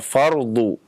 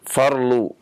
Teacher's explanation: ini huruf dha, ya, banyak yang terutama di Kepulauan Jawa ya menjadi L, ya. Fardu misalnya, kata-kata fardu ya menjadi farlu, akhirnya menjadi kata-kata perlu, ya.